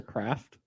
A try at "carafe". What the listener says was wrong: No, it's carafe. No, carafe. Yeah, there's no T in it.